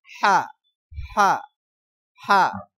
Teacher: কণ্ঠনালীর মাঝখান থেকে গরম বাতাসের সাহায্যে উচ্চারিত হবে। হ্যাঁ, হা হা হা, গরম একটা বাতাস বের হয়, হা উচ্চারণে বাংলা আকার প্রকাশ পাবে।